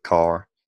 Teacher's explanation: American accents tend to have the roticity, so you'll pronounce an R at the end of a word like car.